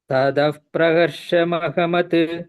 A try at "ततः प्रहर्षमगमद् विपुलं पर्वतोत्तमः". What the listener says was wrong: tata I am hearing